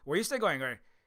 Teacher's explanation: If you're asking a question, you kind of like it goes up and then down at the end.